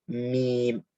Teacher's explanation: the meme, of course, pressing the lips together and using the nasal passage.